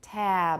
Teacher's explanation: before a voice sound, the vowel gets lengthened · you still need a bit of voicing at the end. Usually it stops about halfway through, but we still need that voicing, at least if we're pronouncing it normally. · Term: final voicing